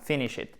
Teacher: accent tonique sur la première syllabe